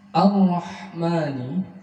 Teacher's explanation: ma dibaca satu alif, tidak lebih dan juga tidak kurang, karena ini termasuk mad asli atau mad tabi'i